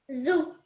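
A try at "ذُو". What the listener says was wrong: dhu. So your tongue needs to touch the top of your teeth. So it's not a simple zoo, it's dhu.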